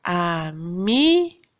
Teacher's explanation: o me é a sílaba tônica